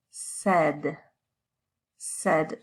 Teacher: this a i it actually sounds a lot more like an e this short e sound